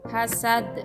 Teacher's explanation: Hasad dibaca sad dengan huruf dal disukunkan serta memantul dan dinamakan qalqalah kubro.